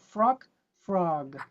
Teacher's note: we need to extend the vowel because we're not going to stop it. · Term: voiced final consonants